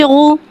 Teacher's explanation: पेश को होठों की गुलाई के साथ अदा करके पढ़ेंगे।